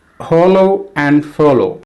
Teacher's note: In hollow, the first syllable is stressed and the second syllable is unstressed. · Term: feminine or weak rhyme